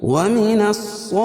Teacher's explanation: صاد کو پر پڑھیں گے، کیوں؟ صاد حروف مستعلیہ میں سے ہے